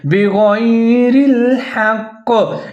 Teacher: ہوگا، آپ نے بِغَيْرِ الْحَقِّ، کاف کے نیچے زیر ہے لیکن کاف کو آپ نے موٹا کر کے مضبوطی کے ساتھ پڑھنا ہے